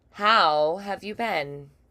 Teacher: Usually you'll hear an elongation on how.